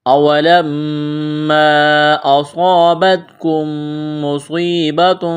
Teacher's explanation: صاد کو موٹا کرنا ہے، سیٹی کی آواز پیدا کرنی ہے